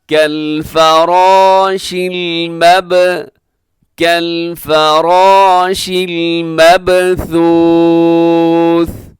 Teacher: کالفرا میں فا باریک ہے لیکن را اور الف دونوں موٹے پڑے جائیں گے